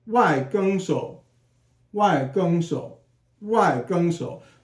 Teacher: it's first tone and then third tone